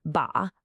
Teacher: ba, that falling fourth tone for father